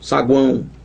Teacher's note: Um A nasalizado total e um outro U, saguão. Semivogal, semivogal, e no meio a vogalzona A, toda cheia de nariz aí nela, né? Ela tá toda nasalizada. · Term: tritongo